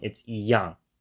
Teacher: because it's followed by the 4th tone, it gets realized as the 2nd tone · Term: tone sandy